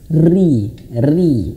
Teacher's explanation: Kalau dia berharakat kasrah maka dia tipis.